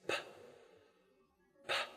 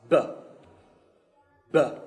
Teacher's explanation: have the same mouth position, but the first is unvoiced, p, p, and the second is voiced, b, b